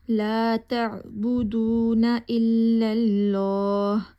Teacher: یہاں پہ ہم نے لام کو لمبا کرنا ہے، تھوڑا سا موٹا کر کے پڑھنا ہے۔